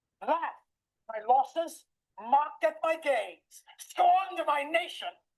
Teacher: Listen how Al Pacino increases his speech rates to show that he is upset. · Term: tempo